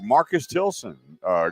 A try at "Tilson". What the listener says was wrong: You said Tilton, I thought.